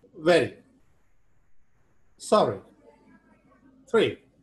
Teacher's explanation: The active articulator strikes against the passive articulator just once. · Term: flap